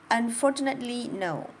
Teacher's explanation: Now I have stressed on for, unfortunately. But then all of the next three syllables after it are all syllables that I don't have a lot of stress, and then the word no is stressed.